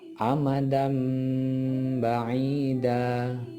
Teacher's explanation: Cara membacanya ialah suara nun sukun atau tanwin diubah kepada suara mim terlebih dahulu dengan merapatkan kedua bibir serta diikuti dengan suara dengung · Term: iqlab